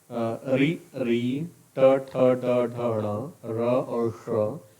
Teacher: इनका उच्चारण स्थान है मूर्धा और इनको मूर्धन्य स्वर, मूर्धन्य वर्ण बोलते हैं